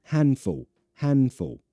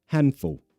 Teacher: So I say we remove the D, but it's not 100% gone, right? You can still kind of hear it.